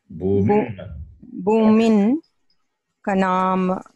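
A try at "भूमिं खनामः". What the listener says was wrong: Bhumim Kanamaha. Bhumim. Kanamaha, not Bhumin. Bhumim. Bhumim. Is different. Bhumin is different.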